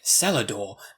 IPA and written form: sɛlədɔː (cellar door)